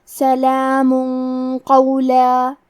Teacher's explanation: قاف حروف الاخفاء میں سے ہے تو ہم یہ حکم کو غنہ کے ساتھ ادا کریں گے